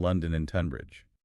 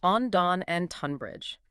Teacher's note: that initial sound is often pronounced as a short, sharp O sound, like on.